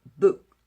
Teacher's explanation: 부산은 바람이 많이 나오고 북은 저 같은 경우는 바람이 그래도 좀 적게 나와요. 적게 나오는데 그 브라는 사운드 자체는 원래 바람이 안 나오는 사운드예요